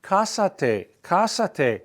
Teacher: Accent on the a right at the beginning